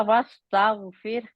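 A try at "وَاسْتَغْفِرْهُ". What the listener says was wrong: रा को मोटा करें, अरे एक मिनट, एक मिनट, असल प्रॉब्लम क्या है, आपकी रा मोटी नहीं है।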